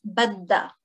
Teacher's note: Now, for this one, badha. There's actually the ha pronoun, but we say it quickly as badda for short.